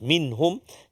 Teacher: nun mati bertemu dengan ha, iaitulah izhar halqi. Izhar halqi, jelaskan bacaan kita, tak ada dengung. Terus minhum, jangan lama jangan minhum.